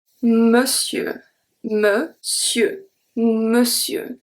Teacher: Here we have ON that is going to be pronounced as a E.